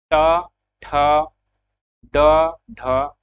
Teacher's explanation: जब हम उच्चारण करते हैं ट वर्ग के वर्णों का, तब हमारा जीभ जो है वह मूर्धा को स्पर्श करती है। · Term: मूर्धन्य